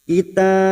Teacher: ujungnya kita pantulkan karena terdapat huruf ba yang dibaca wakaf